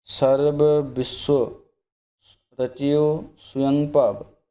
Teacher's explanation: ਵਾਵੇ ਦਾ ਜਿਹੜਾ ਇਸ਼ਾਰਾ ਵੀ ਨਾ ਆਵੇ, ਐੜਾ ਸ਼ੁੱਧ ਰੂਪ ਦੇ ਵਿੱਚ ਬੋਲਣਾ, ਕਿਉਂਕਿ ਜਦੋਂ ਇੱਦਾਂ ਦੇ ਪਾਠ ਹੁੰਦੇ ਨੇ ਉਦੋਂ ਆਪਾਂ ਬੋਲਣ ਦੀ ਕੋਸ਼ਿਸ਼ ਐੜਾ ਕਰਦੇ ਹਾਂ, ਪਰ ਆਪਣੀ ਜਿਹੜੀ ਆਵਾਜ਼ ਆ ਜਾਂ ਮੂੰਹ ਦੀ ਜਿਹੜੀ ਸ਼ੈਲੀ ਆ ਉਹ ਵਾਵਾ ਬੋਲਣ ਨੂੰ ਕਰਦੀ ਹੈ।